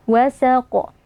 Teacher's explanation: ada Q yang kita waakafkan atau kita sukunkan saat waqaf nah cara membacanya dengan kita berikan pantulan suara yang agak kuat pada huruf qaf ini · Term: Qalqalah kubra, qalqalah kubra